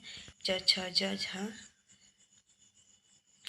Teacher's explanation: उच्चारण के बाद वाला भाग संघर्षी होता है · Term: स्पर्श संघर्षी